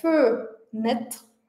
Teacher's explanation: Então, o primeiro E a gente mantém bem curto, bem fraco, bem arredondado. E o último E desaparece, né? Porque ele está em posição final, depois de uma consoante R, então ele vai desaparecer. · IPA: /ə/